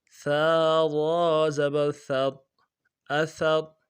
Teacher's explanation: ثا باریک را موٹا